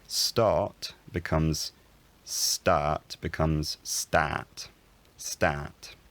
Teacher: the start vowel fronts instead of being at the back of the mouth it's at the front of the mouth in terms of tongue position